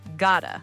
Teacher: notice the T in gotta sounds like a D. It's a flap T.